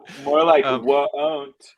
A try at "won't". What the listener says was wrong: Whoa, pronounces it woat. you pronounce it woat, it sounds like.